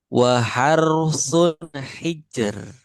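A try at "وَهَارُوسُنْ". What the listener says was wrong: Nah, yang ro pertama justru yang kurang tebal. Waharu, waharu. Kalau yang kedua sudah tipis. Waharu. Waharu. Waharusun hijr.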